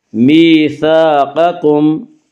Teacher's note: وَإِذْ أَخَذْنَا مِيثَاقَكُمْ، یا مدہ وہ یا جو ساکن ہو اور اس سے پہلے زیر ہو، یا مدہ کو ایک الف کے برابر کھینچ کر پڑھیں گے۔ میثاقکم، قاف کو پر پڑھیں گے، قاف حروف مستعلیہ میں سے ہے۔